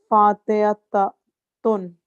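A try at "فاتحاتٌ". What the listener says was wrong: Fatiha. It has to be prolonged. Ha alif ha. Fatiha tun.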